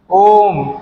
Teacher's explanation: ओम में देखो 3 मात्रा हमारी लग रही है ना, 3 गुना समय लग रहा है, 2, 3 ओम, ठीक है, खींचा जा रहा है।